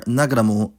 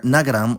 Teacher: [ɐmu] in more formal speech, and [ɐʋ̃] in more casual speech